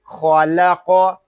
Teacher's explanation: یہاں قاف جو ہے یہ بھی حروف مستعلیہ میں سے ہے، اس کو پر یعنی موٹا پڑھیں گے